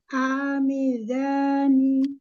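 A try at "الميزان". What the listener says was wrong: Tekan lagi sedikit lamnya di makhrajnya. Al-mizani. Zani. Lamnya tekan lagi sedikit biar jelas lamnya. Al-mizani.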